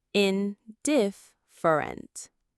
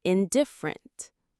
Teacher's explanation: In, diff, fer, ent. The stress is on that second syllable, diff.